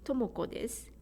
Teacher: the last u sound for this is omitted